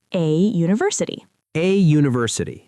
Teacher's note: And the opposite happens with a word like university. It starts with a vowel letter, U, but the sound is yun. It sounds like a Y sound, which is a consonant sound. So we say a university.